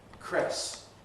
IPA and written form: kres (cress)